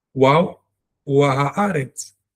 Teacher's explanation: I'm maintaining the short a sound of the name of the letter, which is wow.